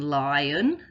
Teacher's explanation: in lion the o is making the uh sound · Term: schwa